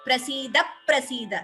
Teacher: Again dvitvam here. So before the second Prasida, we hear extra pa.